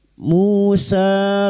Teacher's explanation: Musa duma diikuti wau sukun. Sa dan alif kecil di atas dua harakat. Kita panjangkan mad thabi'i.